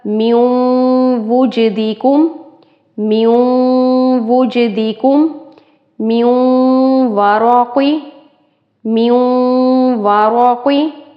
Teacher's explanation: واو اور پیچھے نون ساکن، تو یہاں پر ادغام ہوگا غنے کے ساتھ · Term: ادغام غنے کے ساتھ